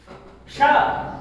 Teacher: श ये तालु से बोला जाता है। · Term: तालव्य श